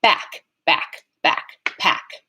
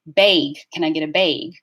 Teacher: The G is voiced. So k is a voiceless velar sound. G is a voiced velar sound. They're in the same place of articulation, same manner of articulation, just one is voiced and one isn't.